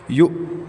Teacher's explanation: یا کے بعد حمزہ ہے تو حمزہ کا جھٹکا دینا ہے۔